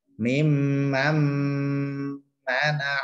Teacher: nunnya langsung lebur ke mim, dimasukkan ke mim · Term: idgham bi gunnah